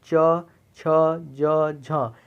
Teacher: ये तालव्य व्यंजन कहलाते हैं क्योंकि इनका उच्चारण तालु के द्वारा होता है